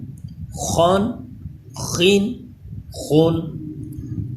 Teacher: خا حروف مستعلیہ ہے، اسے بھی پر پڑھیں گے